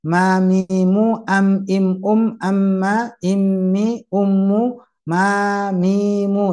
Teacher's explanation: Nah, untuk yang tadi baru saja dibahas yaitu mim. Nah, mim merapatkan dua bibir, tapi juga bersamaan dengan keluar dari hidung atau rongga hidung, khayshum